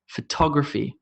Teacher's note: Photography, with an emphasis on the to. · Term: word stress